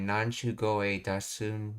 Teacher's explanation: Kansai Ben is characterized by strong vowels in melodic rhythm. The voicing of K to G often makes the word sound softer, more integrated into the preceding phrase, fitting the dialect's specific intonation patterns.